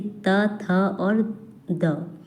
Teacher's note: त, थ और द ये तीनों जो हैं वो दंत व्यंजन हैं